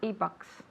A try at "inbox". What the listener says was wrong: No, in your inbox. You don't have to say email again. Just inbox. Inbox. Not inbox, but inbox, okay?